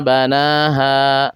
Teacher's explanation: karena ada Alif sebelumnya berharakat fathah yaitu alifnya Alif tarqq karena huruf sebelumnya huruf istifal huruf yang tipis maka dibaca panjang dua harakat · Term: Mad thobii